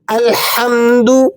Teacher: اس کو ہا کو اس کے مخرج سے یعنی وسط حلق سے ذرا زور کے ساتھ ادا کرنا ہوتا ہے